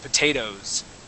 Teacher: we would go straight from an O sound to a Z sound